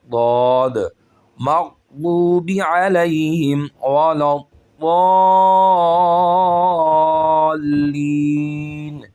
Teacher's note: ضاد کا مخرج ہے اوپر والے دانتوں کی جڑ سے، جو سائیڈ کے دانت ہیں اوپر والے، ان کی جڑ کے ساتھ زبان کی سائیڈیں لگیں گی